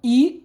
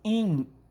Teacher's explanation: Ou seja, o som i virou in. I oral virou in nasal. Houve uma nasalação.